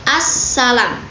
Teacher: bunyi l dipengaruhi oleh bunyi es sehingga lebur menjadi as-salam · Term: asimilasi regresif